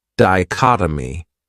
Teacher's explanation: This word has four syllables and the stress is on that second syllable. Dichotomy. That third syllable has that schwa that h sound data.